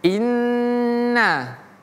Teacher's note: Huruf nunnya harus kita tahan. Jadi seperti dia mengucapkan dua huruf nun. Ada dua bunyi dari huruf nun tersebut.